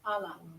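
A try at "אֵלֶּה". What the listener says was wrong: no, not silent. It's a segol. eh. Ella. Ele. Ele.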